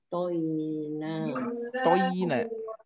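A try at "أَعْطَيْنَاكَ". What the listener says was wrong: Nah, toynya tidak dipanjangkan, tidak toy tapi toina. Jadi memang kalau sekilas kita jadi membacanya toena. Nah, tapi tidak ke toy tapi toy. Ini sudah bagus, tinggal panjang pendeknya seperti fathah berdiri, nanti diayunkan saja biar lebih mudah.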